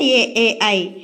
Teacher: కంఠ తాలవ్యాలు అంటే కంఠము ప్లస్ దౌడ రెండు కలిపి పలికేవి